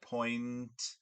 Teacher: the velum has to be down because the air is coming out through the nasal passages